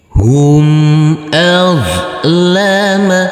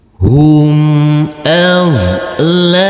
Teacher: huruf do yang bersukun ini tidak boleh dipantulkan karena ini bukan bacaan qolqalah